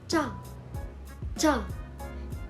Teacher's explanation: this consonant is a tense version of CH it is pronounced with more tension